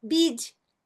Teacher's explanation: ele é curtinho, ele é sequinho mesmo, parecido com o nosso e com circunflexo